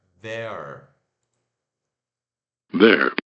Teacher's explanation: o TH vozeado, aquele que a gente coloca a língua na ponta dos dentes, solta o ar e treme as cordas vocais. O E de ela, Eva, então, é, schwa, e o R puxado, there.